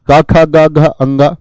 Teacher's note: क वर्ग वाले जो होते हैं यह कंठ से बोले जाते हैं